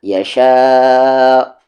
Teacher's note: اسے ہم مد متصل کہتے ہیں کیونکہ حمزہ اسی ورڈ میں ہے تو اسے کھینچنا ضروری ہے